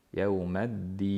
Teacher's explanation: oxirlari mad oriz bo'lyapti biz 4 harakat cho'zyapmiz